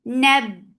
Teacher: Ba will get sifa of shidda. It is cutting, the makhraj is cutting off the flow of sound. So the sound will be cut off.